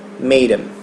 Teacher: como o D, se a gente tirar o TH, ele vai ficar entre duas vogais, ele acaba tendo o som de R.